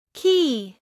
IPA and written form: kiː (Key)